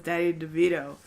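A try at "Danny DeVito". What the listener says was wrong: It sounds like you said Daddy. Danny. Danny.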